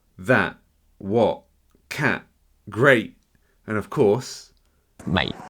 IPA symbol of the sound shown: ʔ